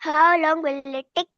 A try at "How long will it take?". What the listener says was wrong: टिक मत बोलो.